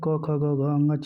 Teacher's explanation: यानी क वर्ग कंठ से बोला जाता है।